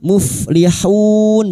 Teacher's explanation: Muflihun bertemunya mad dengan huruf hidup yang dibaca wakaf. Mad arid l sukun empat harakat kita panjangkan